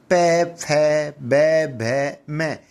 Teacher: पै, फै, ब, भ, म यानी इन वर्णों का उच्चारण हम बिना होठों की सहायता से नहीं कर सकते हैं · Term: पै वर्ग